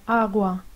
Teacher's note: tiene una pronuncia menos fuerte en posición intervocálica